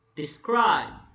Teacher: The first syllable is unstressed and the second syllable is stressed. Describe. You put a stress on the second syllable. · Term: iam